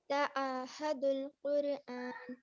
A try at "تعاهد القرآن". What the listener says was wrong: تعاہد القرآن, یہ ہا جو لائٹ والا ہا ہے نا, ہا کی طرف نہیں جائیے. ہا اور ہا میں فرق ہے نا.